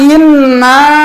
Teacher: Dua-duanya inna dengung ke hidung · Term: Gunah